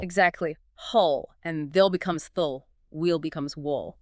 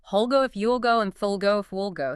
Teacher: But in relaxed, fast speech, that transition smooths out. It becomes more of a dark ol or ol sound, and the pronoun vowel often gets reduced too.